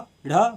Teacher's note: उच्चारण में जीभ ऊपर उठकर झटके से साथ नीचे आती है। मतलब आप इसको प्रैक्टिकली करके देखिए, जीभ पहले ऊपर उठती है फिर झटके से नीचे आती है, जैसे ढ ढ बोल के आप देख लीजिए। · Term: उच्छिप्त व्यंजन